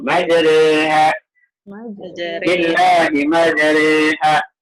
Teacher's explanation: Bacaannya antara ro dengan ri. Antara ro dengan ri. Dia bukan re bukan. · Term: bacaan imalah